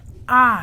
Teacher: एक होता है विवृत, जिसका मतलब होता है खुलना। जैसे हम बोलते हैं अपने मुख से आ, तो आ बोलते समय हमारा मुख खुल जाता है।